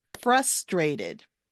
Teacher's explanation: The emphasis is on the first syllable, frustrated, not frustrated, frustrated.